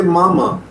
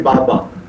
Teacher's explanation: Baba, Mama, same movement. If the nose contributes, the sound becomes Mama. If the nose doesn't contribute, the sound becomes Baba. So nasal contribution is very important for your sound to be proper.